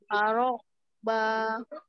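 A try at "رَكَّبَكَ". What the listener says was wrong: Arokabak. Jadi di situ ada kafnya, kaf yang bertasdidnya jangan ketinggalan.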